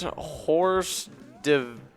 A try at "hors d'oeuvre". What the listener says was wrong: That's a hors d'oeuvre. Just hors d'oeuvre. you don't say the H, basically. Hors d'oeuvre.